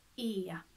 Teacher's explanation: You say for example A, so A, it's almost like going for A, that's a diphthong. So we have a tiny diphthong here in the Swedish E.